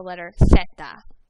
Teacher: in Spain, they're a little lispy, and their S's sound like th